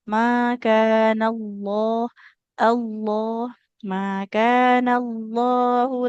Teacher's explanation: sempurnakan ketebalan di lamnya karena di lafaz Allah yang didahului fathah